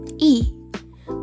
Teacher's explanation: Bunyi I dihasilkan oleh posisi lidah yang berada di depan dan rahangnya tertutup. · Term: fonem I